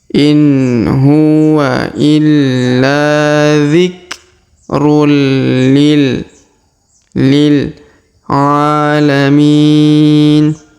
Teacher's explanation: Huruf tanwin un bertemu lam atau li di sini berharokat tasdid, maka tanwinnya menghilang melebur ke huruf li ya.